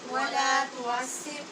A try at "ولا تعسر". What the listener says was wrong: تعسر نہیں تعسر عین ہے، ولا تعسر تعسر، عسر نہیں پڑھیں، تعسر